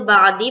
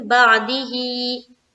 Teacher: जब हम स्टॉप करेंगे तो बादी पढ़ेंगे, और जब हम स्टॉप नहीं कर रहे तो हम क्या पढ़ेंगे? बादी ही।